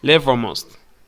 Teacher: When spoken first, level almost can link the hello sound connects both words, so it feels like level almost. The middle E in level gets reduced.